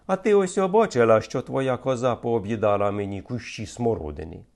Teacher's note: Чітке, роздільне, майже монотонне вимовляння кожного складу, що характерне для всього лівобережжя. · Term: мелодику